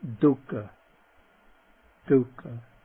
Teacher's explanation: The voiced dental. The word for suffering.